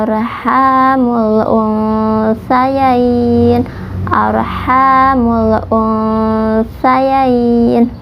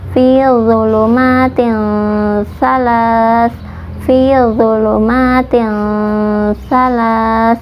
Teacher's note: Kalau kita sudah mengetahui makhrajnya, ikhfanya akan ketahuan dari sini, karena huruf sa itu makhrajnya ujung lidah menempel pada ujung gigi seri atas, lidahnya sedikit keluar